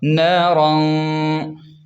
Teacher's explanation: را کو موٹا پڑھیں اور غنہ بھی کریں، کیونکہ تنوین کے بعد زال ہے تو یہاں غنہ ہوگا